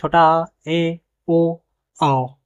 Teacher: जिनके उच्चारण में मुंह विवृत से कम खुलता है। अर्थात आधा खुलता है। ऐसे स्वरों को हम अर्ध विवृत स्वर कहते हैं।